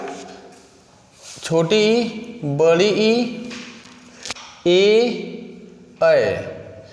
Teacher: स्वर मध्य स्वर पश्च स्वर अग्र स्वर का मतलब होता है जिसको बोलने में जीभ का अगला हिस्सा ऊपर नीचे होता है उसे अग्र स्वर कहते हैं